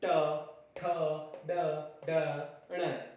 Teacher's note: जब हम ये उच्चारित करते हैं तो हमारी जीभ का जो भाग है वह मूर्धा को बार बार स्पर्श करता है, जिसकी वजह से ये वर्ण उच्चारित होते हैं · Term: मूर्धन्य